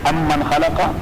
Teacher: ایک اصل کلمہ ہے اور پھر من، تو ایک میم کو دوسرے میم کے اندر داخل کر دیا گیا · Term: ادغام